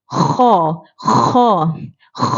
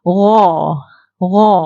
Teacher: kalau Kha ni kita kena hembus supaya dapat bunyi Kha tu tapi gha Ni kita tak perlu